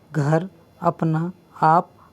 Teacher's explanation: इस प्रकार के शब्दों को केवल मुख से ही बोला जाता है। इनकी ध्वनि केवल मुख से निकलती है, ना कि नाक से। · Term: निरानुनासिक स्वर